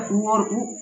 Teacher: उ और ऊ ओठ से बोले जाते हैं